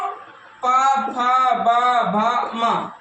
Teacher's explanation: प वर्ग को प फ ब भ म ओष्ट से ना ओष्ठ के बीच से बोला जाता है